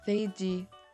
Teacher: But we can just go with the English pronunciation and say feiji with the F sound instead of a P sound